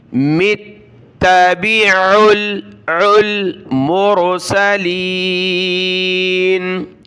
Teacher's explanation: عین نکالیں گلے سے